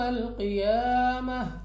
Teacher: یا ساکن سے پہلے زیر یا مدہ 2 سیکنڈ تک کھینچنا ہوگا. قوف مستعلیہ میں سے ہے، موٹا پڑھا جائے گا منہ اور آواز کو کھول کر.